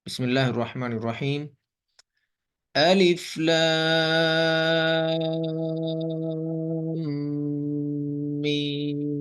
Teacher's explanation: میم پر سب سے پہلے ہم غنہ کریں گے، یعنی اس کی آواز کو ناک میں لے کے جائیں گے۔ تو جب ایک الف کے برابر غنہ ہو جائے گا پھر ہم اس کے بعد میم پر مد کریں گے 5 سے 6 الف کے برابر، ٹھیک ہے۔